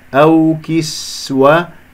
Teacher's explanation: سين يجري فيها صوت والنفس